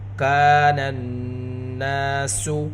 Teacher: نون کے اوپر، نون مشددہ ہے، نون کے اوپر گنہ کریں گے، ساتھ الف مدہ، الف سے پہلے زبر، نون کی آواز کو دو حرکت کے برابر کھینچ کر پڑھیں گے